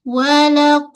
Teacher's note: Dia pangkal lidah terangkat, bahagian tengah lidah pun terangkat.